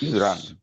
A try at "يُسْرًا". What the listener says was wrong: ইউসর ইউসর হবে, যেহেতু শেষ হয়ে যাচ্ছে তাহলে র দিয়ে আলিফ ইউসর।